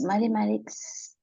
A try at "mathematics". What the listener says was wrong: Ok, repitamos la palabra solo matemáticas. Mathematics. Ok, suena como T todavía, ¿verdad? Mathematics.